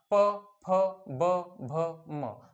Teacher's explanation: तर उच्चार करताना ओठांचा वापर हा करावा लागत असतो. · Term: ओष्ठवर्ण